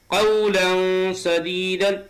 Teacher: قولا سدیدا تنوین کے بعد سین اخفا کے 15 حرفوں میں سے آیا ہے، تو قاعدہ اخفا کا ہوگا اور آواز کو ناک میں چھپا کر